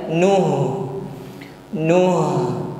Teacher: huruf ha sukun sifatnya Hames ada nafas mengalir